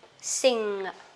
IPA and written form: sɪŋ (sing)